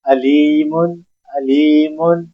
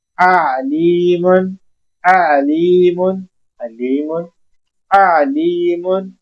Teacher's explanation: सीने से आवाज आती है हमजा की, अलिफ जबर आ की, अलीमुन, अली, सीने से आवाज सीधी साफ बाहर आती है तो हम अलिफ अदा करते हैं